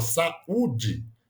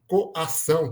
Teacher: é o encontro de duas vogais em sílaba distintas né então uma vogal fica em uma sílaba e a outra fica em outra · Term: iato